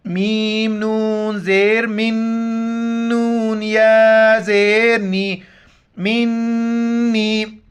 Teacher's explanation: نون کے اوپر شد ہے، یہاں پر ناک میں آواز چھپائیں گے. میم نون زیر من، نون یا زیر نی، منی.